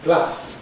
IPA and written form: glæs (glass)